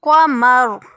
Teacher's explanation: وقف کی صورت میں یہ را پور پڑی جائے گی. قمر.